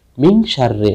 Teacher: তোমরা খেয়াল করো মিনশাররে নুন সাকিনের পরশিন ইসারুফ আসাতে এখানে নুন সাকিনকে এমনভাবে গোপন করে পাঠ করতে হবে যাতে তা ইজহার ও ইদগামের উচ্চারণের মাঝামাঝি অবস্থায় উচ্চারিত হয়। তাহলে নুন সাকিন ও তানবিনকে গুন্না সহ ইকফা করে ইকফা বা গোপন করে পড়তে হবে।